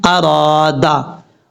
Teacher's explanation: आगे अलिफ मद्दा है, एक अलिफ की मिकदार इसको लंबा करके पढ़ेंगे